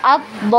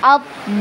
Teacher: Kemudian huruf lam yang bertasydid ya, itu tadi huruf yang bertasydid itu dinaikkan ya atau ditinggikan suaranya ya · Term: dinaikkan suaranya